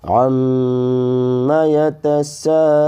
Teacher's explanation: عین کو میم سے ملا کر پڑھنا ہے کیونکہ میم پر علامت تشدید ہے ، تو عین کو میم میں ملائیں گے، عین میم